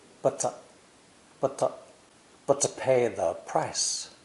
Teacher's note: the two t's in but and two are also linked and both vowels reduce to schwa